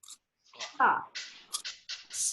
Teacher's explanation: दोनों दांतों के बीच में जबान की नोक का हिस्सा आएगा, तब हमारा इसका मखरज अदा होगा सा।